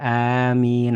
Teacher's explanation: Kemudian mimnya di kedua bibir.